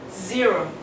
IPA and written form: ˈzɪərəʊ (zero)